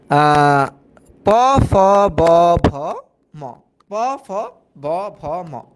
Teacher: দুইটা অষ্ঠ একে অপরের সাথে বাড়ি খাইতেছে বা ওষাধর বাড়ি খাইতেছে হ্যা আচ্ছা হ্যাঁ আচ্ছা প ফ ব · কারণ 2টা ওষ্ঠ একে অপরের সাথে বাড়ি খাইতেছে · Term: অষ্ঠ ব্যঞ্জন, দ্বি ওষ্ঠ